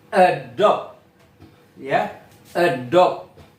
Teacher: Jadi tekanannya tuh di suku yang terakhir teman-teman the last syllable